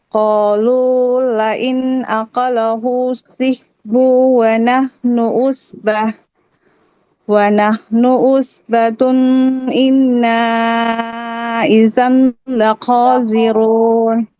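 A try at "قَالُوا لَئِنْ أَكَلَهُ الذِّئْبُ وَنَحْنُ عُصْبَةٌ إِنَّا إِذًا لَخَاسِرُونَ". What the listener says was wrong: Iya, sudah bagus. Tinggal di kata zi'bunya. Tadi kedengaran panjang. Jadi zi'buwanah.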